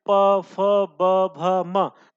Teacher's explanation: आपके जो दोनों ओट होते क्या होते हैं चिपक जाते हैं यानी स्पर्श करते हैं इसलिए इनका उच्चारण स्थान क्या होता है ओष्ठ होता है तो